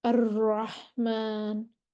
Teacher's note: इसको अदा करते वक्त आवाज में कपकपी पाई जाती है, जिससे तकरार सा महसूस होता है। अर्रहमान, और ये भी सिर्फ एक ही हर्फ है, रॉ, दो दफा आवाज रॉ, रोल होती है आवाज, कपकपी पाई जाती है, ऐसे लगता है रॉ, सिर्फ रॉ है।